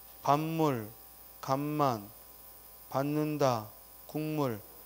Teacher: 자, 거기 파여름의 비음화 예문을 보면 반물, 간만, 받는다, 국물 결국 바뀐 걸 보면 비읍이 미음으로 또 디귿이 니은으로 기역이 이응으로 즉 비음으로 바뀌었으니까 비음화라고 하고 또 바뀐 게 앞에 오는 음절이고 그걸 영향을 준 게 뒤에 음절이니까 뒤에서 앞에 걸 바꾸면 동화의 방향상 역행동화라고 하는 거고 앞에서 뒤에 영향을 주면 순행동화라고 하는 거고 둘 다 영향을 주면 상호동화라고 하는 거야.